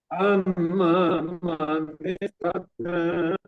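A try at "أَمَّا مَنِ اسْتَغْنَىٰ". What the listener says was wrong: Sekali lagi, mimnya dirunahkan lagi, tambah runahnya.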